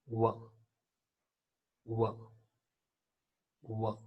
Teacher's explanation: So W is a voiced bilabial semi-vowel.